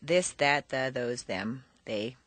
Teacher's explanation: of the other consonants there are two types voiced and unvoiced the voice th is like a d but instead of being in back of the teeth it's a quarter inch lower and forward between the teeth